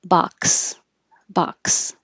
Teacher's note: when um the x is at the end of words it's going to sound like a k and an S together · When Z is at the beginning of words, and Americans are going to pronounce it as Z, xylophone, xylophone, and xenophobia, xenophobia. When the X is at the end of words, it's going to sound like a K and an S together.